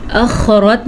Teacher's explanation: اخرت میں خا کے مخرج کا دھیان رکھنا ہے اور را کو پر پڑھنا ہے